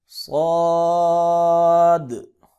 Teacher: صاد کو موٹا بھی کریں گے، سیٹی کی آواز بھی نکالیں گے اور اس کو 4 یا 5 الف کے برابر لمبا بھی کریں گے